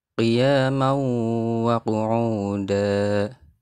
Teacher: Hukum bacaannya idgham bi khunnah karena ada tanwin bertemu dengan huruf wawu.